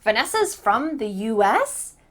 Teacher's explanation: Make sure that you lift your voice at the end. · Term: intonation question